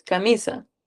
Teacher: En mí está el acento, es donde cae la mayor fuerza